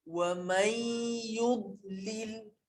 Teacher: Jadi matikan huruf dad, jangan qalqalahkannya. Kalau qalqalah dia akan jadi wa may yudlil. Jangan yud.